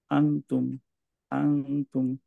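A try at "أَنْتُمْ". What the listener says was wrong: আন্তুম। আন্তুম। টাংটা আরেকটু সামনে আসবে। এই আপনার আম, সামনের যে টিপটা ওইটার কাছাকাছি থাকবে ভাইয়া। টাংটা, টাঙের টিপটা, হ্যাঁ। টাচ খেয়ে যাচ্ছে ভাইয়া, হ্যাঙ্গিং থাকবে, হ্যাঁ। আহ, ঝুলন্ত অবস্থায় থাকবে টাংটা ভাইয়া।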